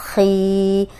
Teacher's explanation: अब ये खौ मोटा है, ज़ेर के साथ भी मोटा ही होगा, लेकिन जितना मोटे हरूफ ज़बर के साथ मोटे पड़े जाते हैं, ज़ेर के साथ उतने मोटे नहीं होते